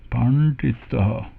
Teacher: So we start with pa, but we should have retroflex N and D there.